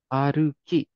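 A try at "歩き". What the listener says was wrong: Perfect. Aruki.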